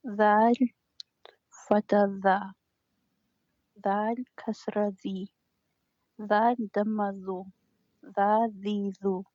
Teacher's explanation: Yeah, this Front tip is tongue a touch. front tip of the tongue, touching the line of the top front two teeth.